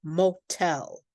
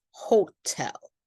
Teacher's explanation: the second syllable is stressed, and then we do say a strong popped T